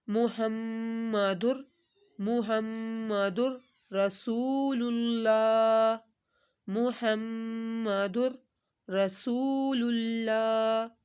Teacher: در کے اوپر غنہ نہیں ہوگا ، را ہے یار ملون میں سے